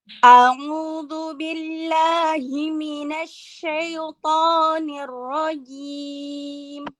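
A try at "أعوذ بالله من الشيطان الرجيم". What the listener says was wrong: Nah, di situ ada yang salah, huruf to-nya kurang tebal, huruf ro-nya kurang tebal. Kurang tebal, bukan kurang tipis. A'udzu billahi minasy syaithanir rajim.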